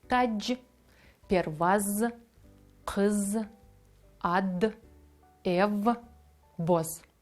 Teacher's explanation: дзвінки приголосні наприкінці слова ніколи не змінюються на їхні глухі еквіваленти. Ми читаємо слово так, як воно написане.